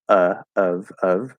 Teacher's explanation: the full pronunciation of the word of is the schwa, which could even be the upside down V if it's really clearly enunciated